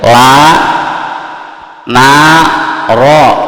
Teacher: Ujung lidah nempel ke mana? Yaitu ke gusi atas.